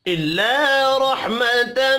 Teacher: إِلَّا الف مدہ ہے، ایک الف کے برابر کھینچ کر پڑھیں گے۔